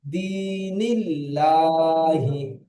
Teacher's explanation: আল্লাহ শব্দের লাম মুসাদ্দাদের আগে জের এসেছে, তাই লা পড়তে হয় বারিক